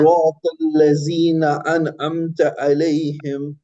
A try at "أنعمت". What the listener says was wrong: हाँ अब अन तो आपने पढ़ा लेकिन अमता हो गया, पहले में हमजा है और दूसरे में आइन है, तो अनअमत, अनअमत अलैहिम सिरातल लज़ीना अनअमत अलैहिम।